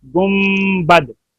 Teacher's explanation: گنبد یعنی میم میں کنورٹ ہو جاتا ہے، نون میم سے بدل جاتا ہے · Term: اقلاب